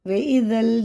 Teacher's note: زال ہمیشہ باریک ہوتا ہے، زبان کی نوک اوپر کے دانتوں کے کنارے سے لگا کے